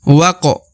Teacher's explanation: setelahnya terdapat Alif kemudian lagi setelahnya terdapat qof berharakat sukun maka alifnya tidak dibaca atau tidak dianggap ya karena huruf wa langsung masuk ke huruf Q